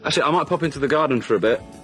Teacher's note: so he stresses the actually then the might then the garden and the bit